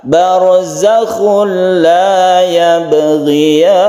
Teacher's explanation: Idgham bila guna, tanwin bertemu dengan lam.